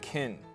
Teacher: I want to emphasize that I kind of nasalize that vowel a little bit, so I could be like kin.